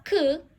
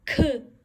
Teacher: May pagbuga siya konti ng air sa ating mouth. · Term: aspirated kyuk